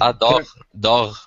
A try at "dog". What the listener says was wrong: You gotta give a hard G here. Dog.